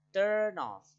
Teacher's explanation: Jadi kita penulisannya turn off, tapi kita bilangnya gini, turn off, seolah-olah n-nya itu ikut ke kata selanjutnya gitu, melebur ke selanjutnya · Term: linking